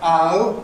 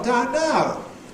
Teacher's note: RP now [ əʊ ], London now [ ʌʊ ] or something opener than that, [ aʊ ].